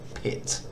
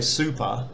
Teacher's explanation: So for example, if you put your hand in front of your mouth and say the word pit, you'll feel a puff of air because the P in pit is aspirated. If you do the same thing and say super, the second syllable of super uses an unaspirated P, so you don't feel that puff of air.